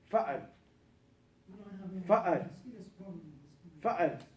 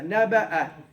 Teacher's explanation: The hamza stops the long vowel.